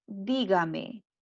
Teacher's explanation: la mayor fuerza de voz está ubicada en la ante penúltima sílaba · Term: palabra esdrújula